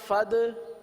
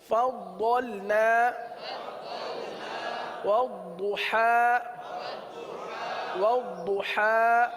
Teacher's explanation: ضاد کے اندر جماؤ کریں گے، صفت استطالت کی وجہ سے یہ اس طریقے سے ادا ہوتا ہے